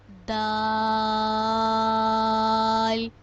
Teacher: جب ہماری زبان کی نوک اوپر والے 2 دانتوں کی جڑ سے لگے گی تو دال ادا ہوگا۔ دال اور تا کا ایک ہی مخرج ہے۔